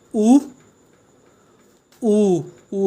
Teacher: वृत्तमुखी, गोल आधा, होंठ हमारे गोल हो रहे हैं ना